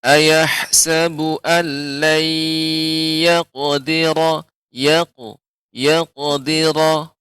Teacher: qalqalah pada huruf qaf lebih tebal lagi